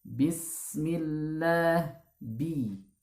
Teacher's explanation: Nah itu terkesan suaranya panjang. Hindari memanjangkan pada kata bis. Langsung saja masuk ke huruf sin.